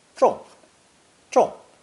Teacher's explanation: Zhong is also a split sound character pronounced fourth tone